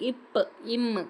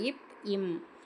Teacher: மேல் இதழும் கீழ் இதழும் பொருந்தவால் வர எழுத்து வந்து